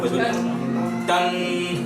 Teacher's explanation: ٹھیک ہے، تو وائبریشن اس میں ہے. اس میں آواز ناک میں جائے گی، آواز ناک میں جائے گی. آواز کو ناک میں لے جانا. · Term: غنہ